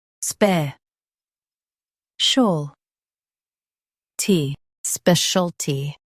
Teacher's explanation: Stress the spe syllable and keep shul soft.